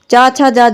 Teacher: च छ ज झ इन चार वर्णों को स्पर्श संघर्षी कहते हैं